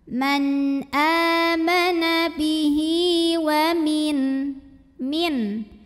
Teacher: Kemudian hi hukumnya adalah mad silah qasirah karena ada hak domir diapit dua huruf hidup dan huruf setelahnya bukan a, bukan i, bukan u, bukan hamzah. Maka hak domirnya ini kita panjangkan dua harokat.